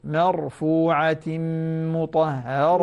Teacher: لاحظي الراء المفخمة، انتبهي الراء المفخمة لا ترققيها